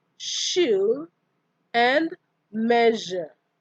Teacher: We have the alveopalatal fricatives. These are sh and j.